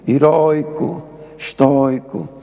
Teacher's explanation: têm portanto, o O aberto por natureza, o ditongo com timbre aberto